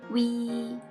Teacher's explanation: when you say this combination, you have to say the U short, E long.